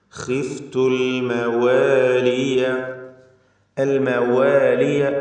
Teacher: വാവിൻ്റെ ഉച്ചാരണം കൃത്യമായി 2 ചുണ്ടുകളിൽ നിന്ന് വരണം